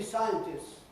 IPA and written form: ˈsaɪəntɪss (scientist)